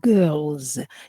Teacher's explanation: Here we have L sound. L sound is a voiced consonant. That's why the S of the plural is pronounced as Z.